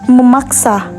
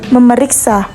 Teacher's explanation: fonem n pada morpem men dan pen berubah menjadi m apabila bentuk dasarnya mengikuti berawal dengan fonem p b f misalnya